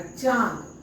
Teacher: जैसे चांद, अब चांद का उच्चारण कर कर देखिए, च मुंह से ध्वनि निकला, फिर आन जो है ना वो नाक से निकलेगा, चांद। च में अंग लग गया, चा द, चांद। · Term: अनुनासिक